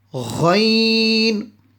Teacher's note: Ghain, also one of the throat letters, and the makhrij, the sound coming from the top of the throat